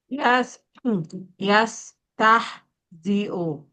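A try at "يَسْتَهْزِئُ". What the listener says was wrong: Nah, itu masih pakai tengah tuh. Lagi, coba beratin lagi ke bawah. Itu tah, masih tah tuh di tengah dia belum turun tuh.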